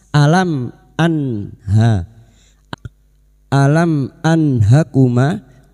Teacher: Nun sukun dibaca jelas tanpa mendengung. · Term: idhar halqi